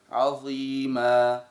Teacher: ثانيا عند قوله تعالى عظيما هو قراها هكذا فاطال بالمد الطبيعي مد حرف الياء طبعا هو مد طبيعي ينبغي ان يمد حركتان فقط